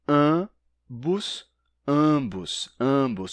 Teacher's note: Bem, nesses sotaques, quando eles vão dizer uma palavra como ambos, em vez de dizerem ambos, ambos, ambos, com A nasal seguido de B, ambos, eles dizem ambos.